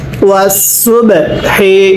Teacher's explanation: বায়ে সাকিন হলে ধাক্কা দিয়ে পড়তে হবে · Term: কলকলা